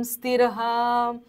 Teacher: शेवट चा जो विसर्ग आहे तो पूर्ण बोलायचा